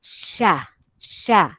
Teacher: dia berkenaan dengan Tengah lidah yang bermain hampir kena kepada lelangit